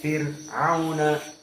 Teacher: Maka jika sebelumnya kasrah, maka Fir'auna dalam keadaan ra muraqqaqah.